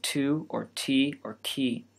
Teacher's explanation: the consonant in the English word two is pronounced strongly, with a puff of air that accompanies the T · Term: aspiration